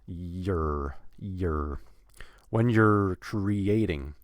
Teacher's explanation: going from the Y consonant, which is further back in the mouth, and then to the R